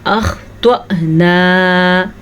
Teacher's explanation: اخطأنا، خوا کو پر پڑھیں، توا کو پر پڑھیں. حمزہ کے اوپر ساکن ہے تو حمزہ پہ ہلکا سا جھٹکا پیدا ہوگا